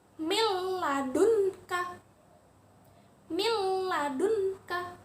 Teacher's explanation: Huruf nun sukunnya jadi lebur, masuk ke huruf lam, tetapi tidak berdengung. Kalau tadi itu bi gunnah berdengung, yang ini tidak berdengung. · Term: bilagunnah, idgham bila gunnah